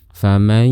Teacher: suara saat dikeluarkan keluar melalui dua jalur, yaitu jalur rongga hidung atau khayshum dan juga jalur mulut kita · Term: idgham bi ghunnah